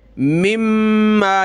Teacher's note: यानी ये मीम अगली मीम से प्लस होगी, नून को हमने नहीं पढ़ना